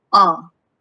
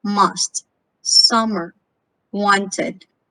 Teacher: the sound is a mid-central lax vowel. Your lips should be relaxed, not rounded, spread. Like when you say up, it's just relaxed.